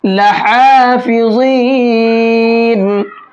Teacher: لحافظین، یہاں پر یہ بڑا ہا ہے، چھوٹا ہا بڑا ہا دونوں کے ساؤنڈ الگ الگ ہوتے ہیں۔ بڑا ہا کا ساؤنڈ تھوڑا باریک ہوتا ہے، مڈل حلق سے نکلتا ہے۔